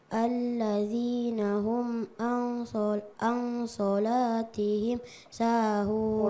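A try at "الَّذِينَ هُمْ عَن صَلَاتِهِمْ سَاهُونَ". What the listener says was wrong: Al-sholah. So-nya kasih tebal nak. Huruf isti'la. So. Al-sholah.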